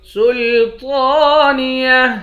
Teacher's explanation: تو پر کھڑا زبر ہے، ایک الف کی مقدار کھینچ کر پڑھیں گے